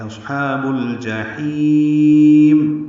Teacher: یہ باریک پڑھیں گے، با کو الجحیم کے لام سے ملا دیں گے، اظہار قمری ہوگا. جیم کو جلدی ادا کریں گے، ہا کو لمبا کریں گے، اصحاب الجحیم، اور میم میں ہونٹ بند کر لیں گے